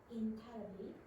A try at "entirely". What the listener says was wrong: Now, stop. What was that? Read that again slowly. Break it up. You're trying to read one big word instead of breaking up the syllables.